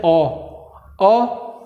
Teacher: जीभ का मध्य स्वर, जीभ के मध्य में हवा जा रही है